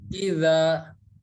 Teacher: huruf zal tempat keluarnya dari ujung lidah kita nempel ke ujung gigi seri yang atas.